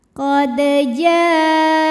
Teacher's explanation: Karena ada huruf qalqalah yaitu dal yang sukunnya ini sukun asli dan ada di tengah bacaan kita. Maka cara bacanya dipantulkan dengan pantulan yang kecil.